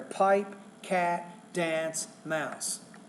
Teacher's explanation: you're putting equal stress on all those words why because you have either nouns or you have verbs there